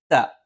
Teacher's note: ത നാവിൻ്റെ അറ്റം മേലെ മുൻപല്ലിൻ്റെ മുരട്ടിലാണ്. മുരട്ടിൽ എന്ന് പറയുമ്പോൾ കൃത്യമായി മുരട്ടിൽ നാവിൻ്റെ അറ്റം സ്പർശിക്കുകയും അതോടൊപ്പം നാവിൻ്റെ അടിഭാഗം ചെറുതായിട്ടൊന്ന് പല്ലിൻ്റെ പള്ളിയിലേക്ക് ചേർന്ന് നിൽക്കും.